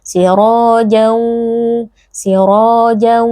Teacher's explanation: Cara membacanya adalah bunyi tanwin atau bunyi nun sukun yang terdapat dalam tanwin ini kita masukkan ke dalam huruf waw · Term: idgham bi gunnah